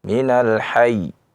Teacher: ketika kita waqaf ya, minal hayy, kita tekan ya, itu yang disebut dengan nabr. Sebabnya adalah karena huruf bertasydid adalah huruf dua ya.